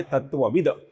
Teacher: आगे का नाम है तत्ववित। इसका जो अपूर्ण त है इसका आगे ए स्वर आने के कारण त थ द ध न में से तीसरा अक्षर अर्थात अपूर्ण द बनता है। ये तत्ववित का होता है तत्वविद।